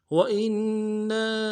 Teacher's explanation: نون سے ادا کریں گے، حمزہ کو نون کے ساتھ ملانا، نون کے اوپر تشدید زور دیں گے، نون کے ساتھ الف مدہ ہے